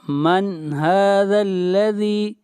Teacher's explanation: نون ساکن کے بعد اگلا حرف حروف حلقی میں سے ہے، اس لیے یہاں پر اظہار ہوگا